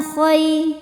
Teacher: Khoi harfu lin karena ada ya sukun sebelumnya fathah. Cara bacanya cukup dilembutkan atau dilunakkan.